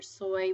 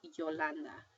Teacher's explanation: it's a semi-vowel at the end of a syllable, like soy, but it is a consonant at the beginning of a syllable, like Yolanda Maya.